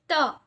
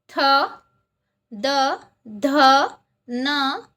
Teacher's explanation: जे वर्ण उच्चारताना आपल्या जिभेचे टोक वरच्या दाताच्या मागच्या बाजूस टेकते त्यांना दंत्य वर्ण असे म्हणतात.